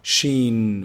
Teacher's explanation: tafashi which means spreading the sound of the letter in the mouth sheen when i say it's filling the mouth with the sheen